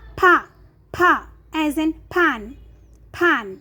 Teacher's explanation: There is a strong air go outside of your mouth when you pronounce the consonant letter pa. With a, with a short vowel a, pa, pa, as in pan, pan.